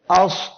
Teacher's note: জিহ্বার গোড়া উপরের দিকে যাচ্ছে তখনই এই অক্ষরটি মোটা হয়ে যাচ্ছে